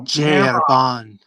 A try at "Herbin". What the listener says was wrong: Arba. You're not supposed to pronounce the N. Arba.